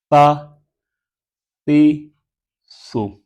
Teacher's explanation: بغیر سٹی کے پڑھا جائے گا نرمی کے ساتھ